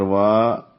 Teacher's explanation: واو والی زبر وا، دو حرکات لمبا کریں گے ، وا کو، واو دونوں ہونٹوں کی گولائی سے، واو پر